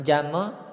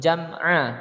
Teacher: Jam'a bukan jam'u tapi jam'a karena dia ini bukan huruf qalqalah ya, tidak boleh memantul. Jam'a, ainnya jelas, bukan an tapi a ya, dipanjangkan 2 ketukan.